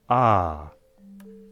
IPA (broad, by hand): aː